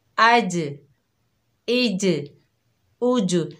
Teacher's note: देखिए आप अपनी ज़बान की तरफ गौर कीजिए कि हमारे ज़बान का जो दरमियानी हिस्सा है उठकर हमारे तालू से लग रहा है